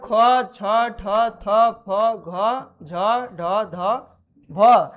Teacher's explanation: इन सारे वर्णों को बोलने में बहुत ज्यादा प्राणवायु का उपयोग होता है मतलब हवा बहुत ज्यादा मात्रा में निकलता है